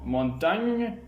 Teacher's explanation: Enfin, dans le cas de l'occlusif gne, comme dans le mot montagne, il y a blocage de l'air au niveau du palais au moyen de la langue, aussi appelle-t-on cet occlusif une dorsopalatal.